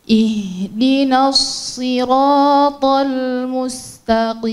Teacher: Tipiskan lagi lamnya, bukan tal. Hati-hati karena pindah dari ta. Ta itu punya banyak sifat kuat.